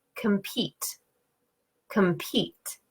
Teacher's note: word like compete compete so this word I can hear that the first syllable I'm saying it quicker my voice is not as loud the tone is lower and it's shorter